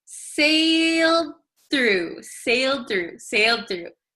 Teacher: Okay, and if you notice, sailed through, it's very difficult to say sailed through, right? So this D sometimes disappears if we say it very quickly.